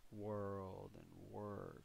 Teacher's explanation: you'll notice your jaw drop a little bit when you say world and work there's that schwa sound in them